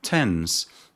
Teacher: the initial sound of tense is a voiceless alveolar plosive. The tongue is the active articulator and the alveolar ridge is the passive articulator.